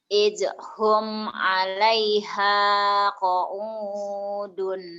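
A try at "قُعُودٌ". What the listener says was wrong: Qu'ud, jangan qa'ud, qu'ud mah paeh, qu'ud. Idhum 'alaih qu'udun, qu'ud. Qu'udun.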